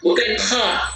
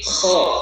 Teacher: Bukan kha, tapi kho. Huruf yang baru tebal.